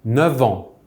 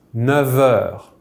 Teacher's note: That F, rarely, will be pronounced like a V if followed by some words starting with a vowel. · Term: V liaison sound